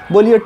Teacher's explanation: अब ट बोलते हैं तो जीभ कहाँ सटता है, सबसे ऊपर टॉप पे, तो इसका उच्चारण स्थान क्या हो जाएगा, मूर्धा हो जाएगा।